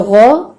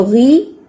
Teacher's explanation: اب غو جو ہے اس میں بھی زبان کی جڑ اٹھاتے ہیں، جو غی ہے اس میں آپ زبان کی جڑ اتنی نہیں اٹھاتے